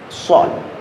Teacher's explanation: Shad itu berdesisnya kita lebih memenuhi rongga mulut kita.